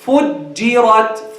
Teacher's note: And make the ra heavy here. Because the Jeem is light, the ra is heavy.